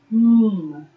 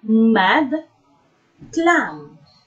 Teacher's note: When articulating this sound, the oral passage is blocked by closing the lips.